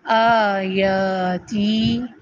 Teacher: آیاتی، آ کے اوپر کھڑی زبر ہے، یا کے آگے اب کھڑی زبر کی جگہ الف خود ساتھ میں لگا ہوا آیا ہے، اس کو بولے آ دو حرکت، یا دو حرکت، تی دو حرکت